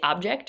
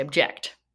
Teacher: Object, emphasis on the first syllable or object, emphasis on the second syllable